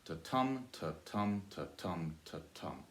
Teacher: we've got 8 syllables and it's alternating soft and stressed